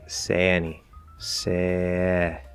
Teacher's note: you can kind of eat that the vowel at the end of the diphthong cut the dip song there now if you try to completely